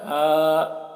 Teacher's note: ہا کو کھینچیں گے کھڑا زبر ہے